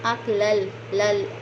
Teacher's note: ये वाज़िया करना है, लाम को लाम से मिलाना है